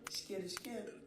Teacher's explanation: Usando os termos linguísticos, a fricativa alveolar se torna uma fricativa pós-alveolar.